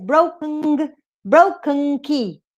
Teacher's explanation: The nasal consonants occur between velar consonants. Entonces acá tenés broken, broken key. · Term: syllabic velar nasals